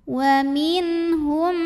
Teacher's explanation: Maka nun sukun kita bunyikan dengan N yang jelas, idhar. Wa minhum.